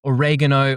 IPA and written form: əˈɹeɪgənoʊ (oregano)